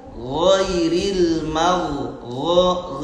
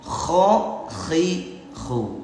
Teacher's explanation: ketika kita ngucapin ghin dan kho, maka tempat keluarnya itu adalah dari adnal halqi, ujung tenggorokan.